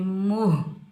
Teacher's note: मीम के ऊपर पेश, मीम को हम हा साकिन के साथ मिलाएंगे, बगैर खींचे पढ़ेंगे। इस हा को हम सीने से अदा करेंगे